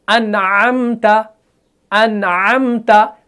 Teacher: नून को बिल्कुल दरमियानी हालत से अदा कर रहे हैं। हम ना ज्यादा आवाज को खींच रहे हैं और ना ही फौरन बंद कर रहे हैं। अनअमता अनअमता, बिल्कुल इजीली अदा कर रहे हैं।